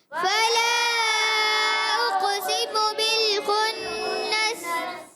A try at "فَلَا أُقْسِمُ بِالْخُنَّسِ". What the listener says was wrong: غنہ پورا کرنا ہے، مد بھی پوری کرنی ہے. فلا اقسم بالخنس.